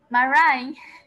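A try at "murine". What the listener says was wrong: Casi, mirror. El primer sonido, mirror, como así, mirror. Mirren, in. Solo in, no ian, in. Mirren.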